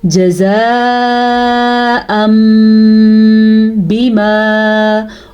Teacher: نون تنوین کے بعد آیا با، تو اس با کی وجہ سے نون تنوین کو میم میں بدل جائیں گے. تو پھر نون تنوین نہیں پڑھا جائے گا بلکہ میم پڑھا جائے گا · تو اگر نون ساکن اور نون تنوین کے بعد حرف با آ جائے تو نون ساکن یا نون تنوین کو میم میں بدل دیتے ہیں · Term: اقلاب